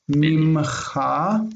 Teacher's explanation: mimen with the noon assimilated into the mem